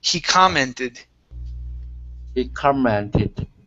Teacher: So the stress is at the very beginning.